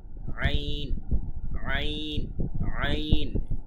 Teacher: একেবারে গলার মাঝখান থেকে ভেতর থেকে বলতে হবে চাপ দিয়ে। আইন, আইন, আইন, এই অংশটি।